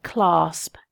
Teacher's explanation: it starts with quite a hard C sound au velar plosive it ends with a bilabial plosive and it's got quite an uncomfortable sibilance in in the middle of the word so it's a word that has has quite a definite feel